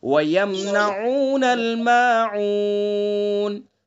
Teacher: العین کو حلق سے صحیح سے ادا کریں گے